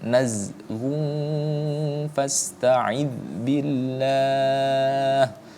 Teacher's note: Nah, idz ada e-nya kan, nah itu tidak boleh, itu hukumnya adalah tawallud, tidak boleh, jadi ditahan.